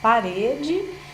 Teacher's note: Se eu falo, por exemplo, parede, eu tenho aí uma sílaba tônica que é pare, né? O re é a sílaba tônica.